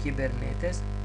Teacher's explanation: хипсилон не е во дивтонг и го читаме и